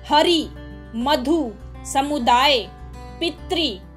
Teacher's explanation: ई, ऊ या री वाले व्यंजन के पूर्ववर्ती स्वर पर भी बोलते समय थोड़ा बल देना पड़ता है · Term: बलाघात